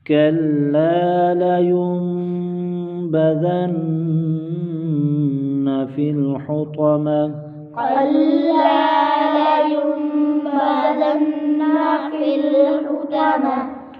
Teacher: کلا، الف مدہ ایک الف کھینچ کر پڑھیں گے، یم پر اقلاب ہوگا، یعنی نون ساکن کے بعد بائے، نون ساکن کو میم سے بدل کر غنہ کریں گے۔